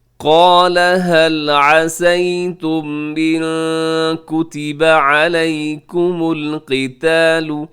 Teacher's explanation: وقف کر دیجیے گا۔ قال هل عسيتم إن كتب عليكم القتال، قال میں قاف اور الف موٹا پڑھ جائیں گے، آگے لام باریک ہے